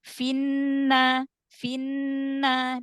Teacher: maka Idam langsung masuk jangan memanjangkan harakat kasrah pada Fi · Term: alif lam syamsiah